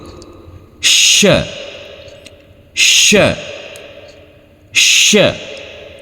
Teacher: kita pertemukan tengah lidah kita dengan langit-langit mulut. Perlu diingat, tengah lidah kita bertemu dengan langit-langit mulut. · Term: huruf shin